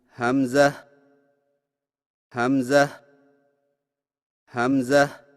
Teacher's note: حمزہ کی ادائیگی میں ہا کو بغیر کھینچے میم کے ساتھ ملائیں اور میم میں آواز کو لمبا نہ کریں